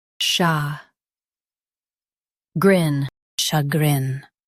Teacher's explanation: Emphasize grin and keep sha soft.